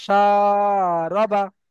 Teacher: সাটা টানাবে, রবাটা টানাবে না। সা রবা। সা র বা।